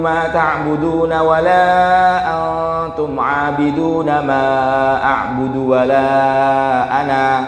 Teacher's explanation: ketika Bapak Ibu wakaf di ana ini dipanjangkan 2 harokat